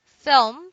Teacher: so we also do not like the combination L plus M one solution is to pronounce the L as W